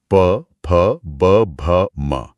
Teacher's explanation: इस हाईवे का अंतिम स्टेशन है ओ यानी ओष्ठ, हमारे होंठ, जहां से प वर्ग की ध्वनियां निकलती हैं।